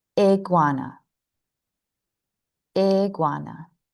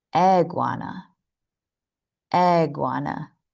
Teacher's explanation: The I sound is coming a little higher up.